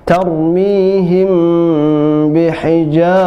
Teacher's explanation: mimnya tetap jelas dibaca, tapi di masuk ke dengung, ya, him bi, tidak seperti mim sukun bertemu dengan mim idgham mimi yang dimasukkan atau idgham, tapi ini ikhfa, disamarkan. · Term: ikhfa syafawi